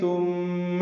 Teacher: والمؤمنات ثم ثا نرمی سے ادا کریں گے، میم مشدد پہ غنہ ہے